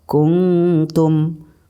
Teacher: nun matinya masih agak sedikit jelas tapi didengungkan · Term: ikhfa aqrab